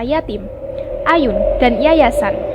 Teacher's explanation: daun lidah pada langit-langit keras lalu udara dihembuskan keluar dengan disertai secepatnya melepaskan daun lidah dari langit-langit keras itu sehingga udara dapat keluar dengan bebas fonem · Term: bunyi y